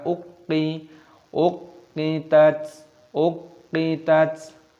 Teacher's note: Ini qafnya berharokat tasdid, maka kita masukkan, kita tekan